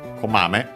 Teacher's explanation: Komame is a na adjective, accent on the first syllable